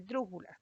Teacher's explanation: tienen la mayor fuerza de voz en la ante penúltima sílaba